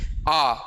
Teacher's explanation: शुरुआत का बड़ा आ जिसको हम मुह खोलकर बोलेंगे